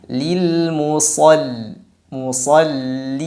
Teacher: Setelahnya ada lam tasydid lagi, tipiskan lam, hati-hati. Lam ini yang sering terpengaruh tebal karena ada sad tebal sebelumnya. Lil musall, al, tarik sedikit untuk menipiskan lam.